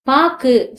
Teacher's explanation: கு அப்படின்ற எழுத்து வந்து கடைசில வந்திருக்கு ஒரு மாத்திரை அளவு ஒலிக்காம என்னன்னா அரை மாத்திரை அளவுதான் வந்து ஒலிக்குது அப்படின்னு சொல்றாங்க சொல்லுக்கு இறுதியில வரும்போது ஒரு மாத்திரை அளவுக்கு பதிலாக அரை மாத்திரை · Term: குற்றியல் உகரம்